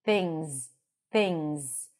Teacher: Things, we have a lax I sound, things. And notice that we have the NG sound and then the Z, things, things.